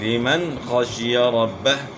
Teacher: نون ساکن کے بعد حروف حلقی میں سے خا آ گئی ہے تو یہاں بھی اظہار ہوگا یعنی غنہ نہیں ہوگا، ربہ، با کے اوپر شد ہے اس کو شد کو صحیح ادا کرنا ہے اور ہا ساکن ہو جائے گی وقف میں۔